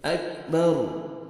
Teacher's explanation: را ساکن سے پہلے زبر ہے، را کو اپنے پر کرنا ہے جب وقف کریں گے تو